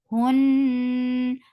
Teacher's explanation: This kunna is akmal, so keep the sound in your nose for a longer time.